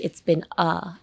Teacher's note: Pronounce the a as a UH. It's been a. And just open your instead of like opening your mouth, both upper and lower jaw, just release your lower jaw.